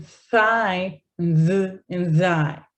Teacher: So dental means that they use the teeth alone, or there's a temporary obstruction of air that happens in los dientes, in the teeth, specifically with my tongue blocking or pressing against my teeth in some way or form. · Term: dental sounds